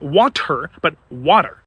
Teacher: in American English, we don't pronounce the T in the middle of a word. We pronounce it as a rhotic.